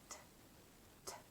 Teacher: the tip of the tongue comes up behind the tooth ridge and releases in a puff of air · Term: true T